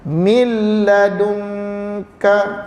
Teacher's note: seolah yang ada situ mim dengan lam, nun tidak ada. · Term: idgham